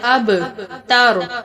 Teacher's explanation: با کے اوپر جزم ہے اور با پر قلقلہ بھی کیا جائے گا